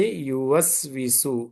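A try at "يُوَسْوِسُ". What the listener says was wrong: యువస్విసు. దీర్ఘం లేదు, త్వరగా చదవాలి.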